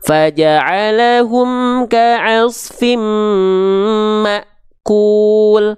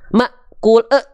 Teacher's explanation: Hamzah sukun punya sifat, hamzah ketika sukun itu terasa sifat syiddahnya. Tertahan suara.